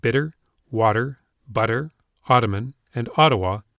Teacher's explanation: my t's will often become d's if they are preceded by a stressed vowel and followed by an unstressed vowel · I pronounced the word bitter, water, butter, Ottoman, and Ottawa with D's instead of T's